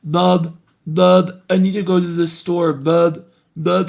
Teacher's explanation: like NS will sound kind of D like and um yeah it'll give a kind of like stuffy nose kind of quality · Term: hyponasal sound